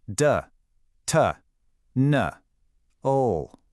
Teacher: D has no puff of air, but T has a really strong one.